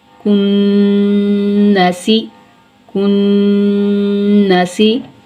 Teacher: کاف باریک پڑھا جائے گا زبان کی جڑ اور تالو کے سخت حصے سے